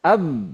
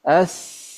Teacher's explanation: ketika suaranya terkunci AB maka dia syiddah ya berbeda sama rakhawah kalau dia longgar suaranya tidak terkunci maka dia rakuah